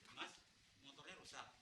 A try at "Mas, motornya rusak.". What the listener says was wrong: Nah, suara lu kurang rendah. Harus agak ngebas. Lu masih tinggi jangan.